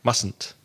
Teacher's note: There's kind of an extra syllable in there, but it's said very quickly.